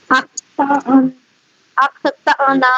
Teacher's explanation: حمزہ پہ جزم ہوگی تو اسے جھٹکا کے ساتھ پڑھیں گے